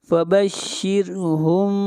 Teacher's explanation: فبشرہم میم ساکن کے بعد با ہے، اخفاء شفوی ہوگا